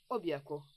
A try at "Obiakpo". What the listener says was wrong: Au fait, ta façon de dire Obiakpo, tu sais, j'aimerais que tu utilises une voix un peu plus romantique pour prononcer ce Obiakpo. Pas Obiakpo comme si on allait à la guerre.